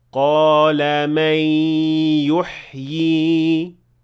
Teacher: So if I stopped at the word يُحْيِي, I pronounced 2 ya and the second ya had natural mad.